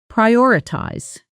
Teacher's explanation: In fast, casual speech, prioritize often sounds closer to priotize with the middle syllables softened almost to nothing. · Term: natural syllable reduction